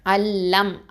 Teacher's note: இதுகாம் காமில் பிலா குன்னா. Okay, முழுமையாக இணைச்சிடணும், குன்னா கொடுக்கக்கூடாது. அப்போது அல்லம் அப்படின்னு வந்துடும்.